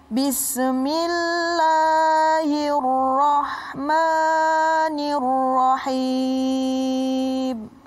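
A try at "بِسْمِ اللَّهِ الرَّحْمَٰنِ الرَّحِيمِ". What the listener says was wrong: Ini di situ bis. Kalau dibaca bis, itu seakan-akan sa. Ya, jadi harus ada mahmusnya. Itu hembusan.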